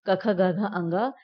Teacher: अब ये जो क वर्ग है इसके अंतर्गत में जितने भी 5 वर्ण आते हैं, क ख ग घ अंग, ये सारे जो है इनका जब हम उच्चारण करते हैं तो वो कंठ से इसकी ध्वनि निकलती है, इसीलिए हम इसे कंठ वर्ग के अंतर्गत रखते हैं।